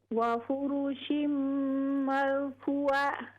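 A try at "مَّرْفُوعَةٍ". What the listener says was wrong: ہاں جی، فو کو لمبا کریں. مرفوعہ.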